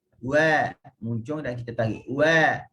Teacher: waw selain daripada huruf mad yang mana makhrajnya adalah syafatain. Wa, muncul dan kita tarik.